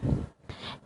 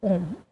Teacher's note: इसके उच्चारण में दीर्घ स्वर से भी अधिक समय लगता है और इनमें तीन मात्राओं का समय लगता है